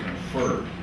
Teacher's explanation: stress on the second syllable